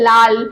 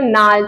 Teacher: এই উপভাষার মধ্যে যেগুলো ও আছে, ও ধ্বনি রয়েছে, স্বরধ্বনি, ও ধ্বনিটা হস্যু ধ্বনিতে রূপান্তরিত হয়ে যাচ্ছে এবং ল ধ্বনিটা কিন্তু নয়ে পরিণত হয়ে যাচ্ছে